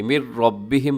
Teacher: را کو موٹا رکھیے گا